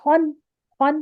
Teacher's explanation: پورا نون پڑھ رہے ہیں، پورا نون ادا کر رہے ہیں. اب ہم ناک میں جا کے نون کی آواز کو خوں کر کے نہیں چھپا رہے